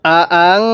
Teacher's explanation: নুন সাকিনের মধ্যে গুন্নাহ করব